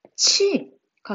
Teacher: 히읗과 지읒이 만나면서 히읗, 지읒은 없어지고 이 둘이 합쳐진 음가, 치읓으로 바뀌었죠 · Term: 축약